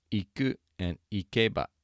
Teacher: You hear how the ba comes down?